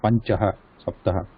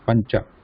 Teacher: There is no Visarga, nothing. It is not Panchaha, Saptaha, just Pancha.